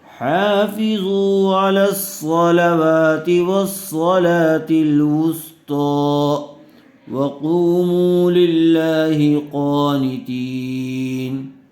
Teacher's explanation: طا کو پر کیجئے اور صاد کو بھی